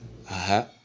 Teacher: Sa prononciation laisse retentir l'air ou bien le son au niveau de la gorge. Donc elle est une lettre gutturale.